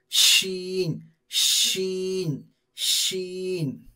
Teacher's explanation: ये बड़ी शीन, इसमें से थोड़ा सा सीटी का आवाज आएगा